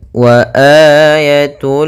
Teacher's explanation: untuk mad badal panjangnya adalah dua harakat